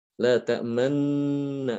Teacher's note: Nun yang pertama diidghamkan ke nun yang kedua. Jadi kalau namanya idgham berarti kan harus dimatikan dulu nun pertama.